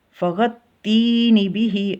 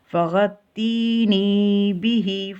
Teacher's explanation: اب یہاں پہ تی کو لمبا کرنا ہے کہ یا سے پہلے زیر ہے تو اس کو ایک الف جتنا لمبا کر کے آگے جائیں